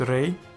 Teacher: The Tsere Aleph is a long vowel and hence a long syllable, and it is also open, because Tsere Aleph is a vowel.